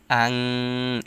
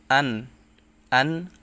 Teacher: এখানে স্পষ্ট করে পড়তে হবে ইজহার অর্থ জাহির বা স্পষ্ট করা নুন সাকিনের পর ইজহারের হরফ আইন আসছে তাই এখানে স্পষ্ট করে পড়তে হবে এখানে কোন প্রকার গুন্না করা যাবে না